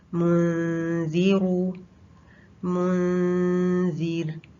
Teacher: پیش کے بعد جو اخفا ہوگا اس میں پیش کے بعد آپ نے ہونٹوں کو سٹریٹ کر لینا ہے، اس میں ہونٹ واپس سٹریٹ ہو جائیں گے.